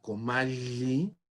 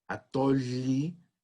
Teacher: noten cómo estoy pronunciando la doble L, no como Y, como estamos acostumbrados a transcribir el sonido de la Y en la lengua española, sino como L, como una lateral palatal